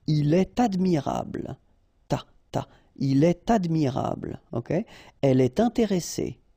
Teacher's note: you should make the liaison, and in that case, it's with T